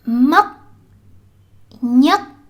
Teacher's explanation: In the South, words like these are pronounced with a k instead.